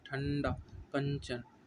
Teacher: अनुस्वार के उच्चारण में वायु नाक से निकलती है और उच्चारण झटके के साथ होता है। ठंडा, न से निकलते हैं, ठंडा, न से निकलती है ना, नाक से निकलती है ना अंकी बिंदी, ठंडा, कंचन, है ना।